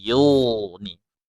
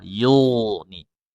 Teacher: La dua harakat, yusminu ditipiskan sinya yus, bukan yus, tapi yusminu, yusminu wala, dua harakat lagi, yughni, yughni, huruf ghain sukun sebelumnya dhammah ditebalkan, bukan yughni atau yughni, tapi yughni, ya tebal, yughni.